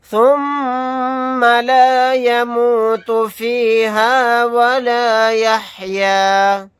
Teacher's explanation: میم کو پر تشدید ہے تو یہاں پر غنہ کر کے پڑھیں گے